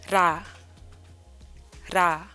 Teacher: So 리을 makes a rolled R sound.